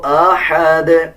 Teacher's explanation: اس ہا کو نرم یعنی باریک پڑھا جاتا ہے۔